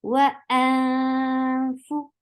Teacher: You are hiding the sound of noon. You are going towards the makhraj of fa, and you are creating sound in your nose. These three steps are for ikhfa.